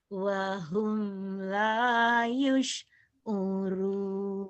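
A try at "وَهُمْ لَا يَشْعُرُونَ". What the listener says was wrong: Wa hum la yash, bukan yus. La yash, bukan yus. Wa hum la yash'urun.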